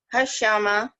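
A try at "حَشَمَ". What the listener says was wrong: Nggak ada tasid. Di tengah. Jangan diputus.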